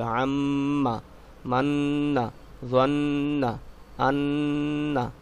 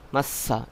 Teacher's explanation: নুন এবং মিম এই দুটি অক্ষরের উপরে যদি কখনো তাসদিদ হয় তখন আপনাকে গুন্নাহ করে পড়তে হবে